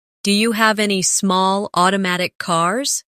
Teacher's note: Do you becomes da naturally